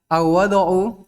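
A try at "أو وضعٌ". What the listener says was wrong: Tanwin. Jangan lupa, tidak idhofah, tidak ada al, tanwin.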